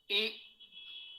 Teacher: ई में जिह्वा आपकी तालु की ओर जाएगी, तो आ कंठ स्थानीय है, ई तालव्य अर्थात तालु स्थानीय है, ये का उच्चारण तालु से हो रहा है।